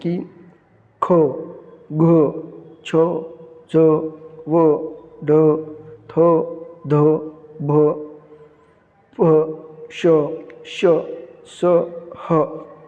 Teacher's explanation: ज्या वर्णाचा उच्चार करताना ह ची उच्चार छटा बाहेर पडते त्यास महाप्राण म्हणतात